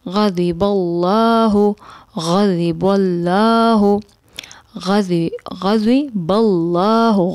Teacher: غین ادنا حلق سے ادا ہوتا ہے